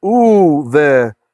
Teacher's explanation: then the bait, instead of being a b, like beinei Adonai, it's v.